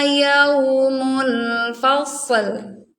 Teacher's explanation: Sodnya tebalkan, lamnya dibacanya tipis ya, jangan ditebalkan.